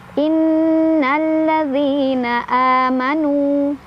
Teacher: Nu mad tabi'i karena ada waw sukun sebelumnya dhammah dibaca panjang 2 harokat.